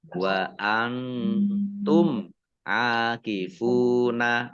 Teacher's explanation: Mim sukun bertemu dengan huruf ain bacaan izhar syafawi dibaca jelas.